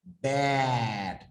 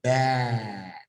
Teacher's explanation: it comes from the very front of your mouth and the jaw goes forward and not on the back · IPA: æ